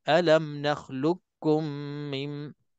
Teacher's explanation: Jadi kita pilihlah masuk dalam idgham mutaqaribain dan bacaan kita alam nakhluqkum min, idgham biasa, masukkan lam ke dalam kaf, qaf ke dalam kaf, maka qaf itu tak disebut, walau sifat pun tak disebut. Terus kita masuk ke dalam kaf sepenuhnya.